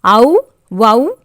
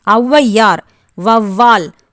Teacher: சொல்லின் முதலில் வரும்போது தனக்குரிய 2 மாத்திரை அளவிலிருந்து குறைந்து 1½ மாத்திரை அளவில் ஒலிக்கும். இவ்வாறு குறைந்து ஒலிக்கும் ஔகாரம் ஔகார குறுக்கம் எனப்படும்.